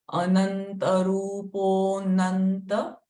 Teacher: So that avagraha is Ananta. So instead of a, we'll just say Nanta.